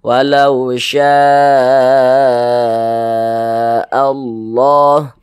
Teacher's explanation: maka lafaz Allahnya pun dibaca tebal dibaca tafkhim